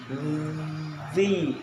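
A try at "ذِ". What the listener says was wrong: Lagi getarnya. Getarnya dikencangin.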